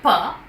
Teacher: the two articulators coming in complete contact and they are the lips two lips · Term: plosive